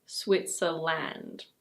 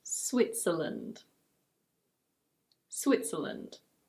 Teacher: It's not "SwitzerLAND". The last vowel sound is a schwa.